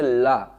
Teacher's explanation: जब ला बोलेंगे तो हमारे जो मसूड़े के जब जबान हमारी पलटती है ला, तो इसके बगल से हमारी हवा निकलती है, इसीलिए हम कहते हैं इसको पार्श्विक।